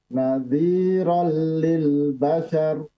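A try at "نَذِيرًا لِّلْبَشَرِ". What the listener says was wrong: Coba ditebalkan afwan ra-nya. Nadhiran lil bashar, bashar.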